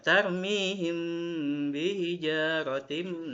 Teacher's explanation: mim sukun ketemu ba, maka dibacanya samar-samar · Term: ikhfa syafawi